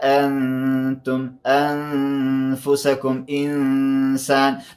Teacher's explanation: نون ساکین د شاته تا حرف د اخفاء دی، دلته نون ساکین پټیږي یعنی اخفاء کیږي.